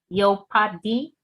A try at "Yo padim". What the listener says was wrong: Yo padim. Yo padim. Again, the A, you make an effort and pronounce it and you're all set. Yo padim. And the dim, you put the way you pronounce D is also a little bit different. We say Z.